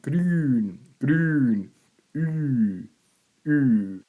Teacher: Cook says as in English green, but the lips rounded. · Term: Long Y